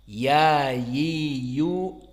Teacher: Tengah lisan bertemu dengan langit-langit atas